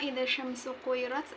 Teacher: Alif lam tidak dibaca langsung tetapi dimasukkan ke huruf shin. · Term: alif lam syamsiah